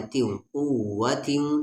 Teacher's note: تنوین کے بعد واو آ رہا ہے یعنی ادغام